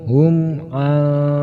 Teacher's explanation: Hukum bacanya yaitu idhar syafawi. Cara membacanya mim harus jelas tetapi tidak boleh mendengung.